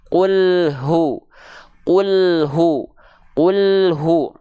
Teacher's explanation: H besar dialirkan dengan nafas dan suara